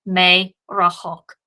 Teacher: the resh is pronounced in the back of the throat just like the gutturals are, and as a result, it does not double easily.